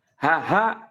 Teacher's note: kalau haha dia ketika diucapkan mengeluarkan napas